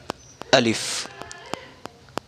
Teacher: الف کا مخرج آتا ہے جوف دہن، یعنی منہ کا خلا حصہ، یہ منہ صرف سیدھا سیدھا پڑھا جائے گا۔